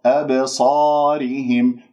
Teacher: أب باء مقلقلة في وسط الكلام، قلقلة صغرى، والخطأ أن تقول أبصارهم بمجرد أن تقف ولو جزء من الثانية على المخرج، مخرج الباء هنا صار مسك ولم يحدث عندي القلقلة، إذن أنت تضرب المخرج وتهرب، بمعنى الاضطراب في المخرج